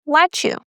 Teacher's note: T followed by Y gives the ch sound.